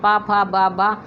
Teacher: ओंठ पर ध्यान देंगे तो दोनों वहाँ पे फड़फड़ाते हुए दिखाई देते हैं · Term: ओंठों की ध्वनियाँ